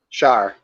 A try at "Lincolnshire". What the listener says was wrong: We don't say Shire. Shire. Sure. Yeah, we don't say Shire.